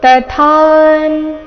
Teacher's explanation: ಇಲ್ಲಿ ತಥಾ ತ ಆದ ನಂತರ ಥಾ ಮಹಾಪ್ರಾಣ ದೀರ್ಘ, ಮುಂದೆ ಅರ್ಧನಕಾರ.